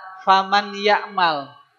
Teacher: Faman ya'mal, nun sukunnya awalnya bunyinya faman ya'mal. Karena ketemu ya, maka yang awalnya man jadi mai karena dia lebur, ya. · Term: idgham